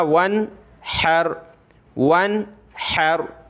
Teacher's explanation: واو نون زبر ون، واو نون زبر ون، حا زبر حر، نون پر ہم نے غنہ نہیں کیا اس وجہ سے کہ حا یعنی حروف حلقی میں سے ایک حرف موجود ہے